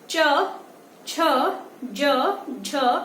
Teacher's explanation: आपकी जीभ ऊपर तालव्य पे, जो ऊपर वाला एरिया होता है, उस पे टच होगी